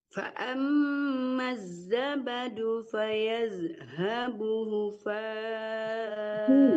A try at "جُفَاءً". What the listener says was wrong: Fayadhabu jufa ya Bu, jimnya juga nggak kejelas deh. Fayadhabu jufa'a.